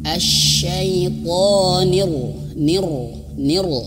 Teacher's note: kita fokuskan kepada huruf ro asyaitonir Nir Nir nah gitu ya rnya tebal tapi ada getaran rnya itu jangan berlebihan